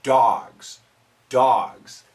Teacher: this is an aw sound for most americans